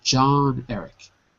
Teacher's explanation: You put the stress on John. It's the stronger word